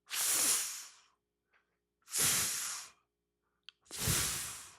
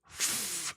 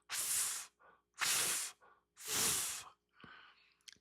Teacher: It's just air on your teeth and lip.